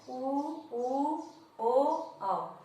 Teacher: ऊ ओ औ, जब हम इनका उच्चारण करते हैं तो हमारे होठ बिल्कुल गोलाकार हो जाते हैं। तो इस वजह से आप खुद ही उच्चारण करके देखेंगे, जब आप कहती हैं ऊ, तो आपका जो होठ होता है वो गोलाकार हो जाता है। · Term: वृत्तमुखी